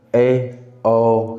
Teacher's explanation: जैसे विवृत स्वर बोलिए, आ बोलिए तो आ, है ना, खुल गया मुंह, ज़्यादा खुला, तो ये हमारा हो जाएगा विवृत स्वर। ठीक, अब अर्धविवृत मतलब थोड़ा कम खुला हुआ, ए, ओ, है ना, आ चेंज हो जाता है ना, आ मतलब ज़्यादा खुला हुआ, और अर्धविवृत में ए, ओ, यानी थोड़ा कम खुला हुआ, लेकिन खुलता है ए, ओ, है ना।